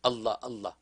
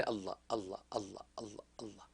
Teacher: زبان کی نوک کو اگر سامنے کے دانتوں کے کناروں سے یعنی جڑ سے ٹکرائیں تو لفظ اللہ نکلتا ہے، اللہ اللہ، تو بس منہ بند ہے، بس زبان کو ٹکراتے رہے، اللہ اللہ اللہ اللہ اللہ، تو سانس جو ہے وہ اللہ کا ذکر ہے۔